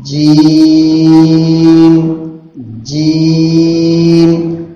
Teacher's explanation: جیم کو کھینچیں گے 5 الف کے بقدر اور جیم تھوڑا سختی کے ساتھ ادا ہوگا. جیم کی ادائیگی میں زبان کی بیچ کو تھوڑا اوپر تالو کی طرف اٹھائیں. زبان کی بیچ کو تالو کی طرف اٹھا کر کے جیم ادا کریں گے.